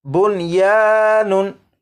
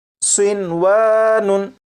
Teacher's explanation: नून साकिन को इदगाम करके नहीं पढ़ेंगे। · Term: इदगाम नहीं